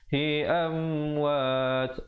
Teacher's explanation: Hi amwat, am bunyi saja am izhar syafawi, datang selepasnya huruf waw. Mim mati yang datang selepasnya huruf waw hukum izhar syafawi, jelaskan saja tanpa dipanjangkan, ya. Amwat, dan waqafkan dengan sekurang-kurangnya 2, 4 ataupun 6 harakat.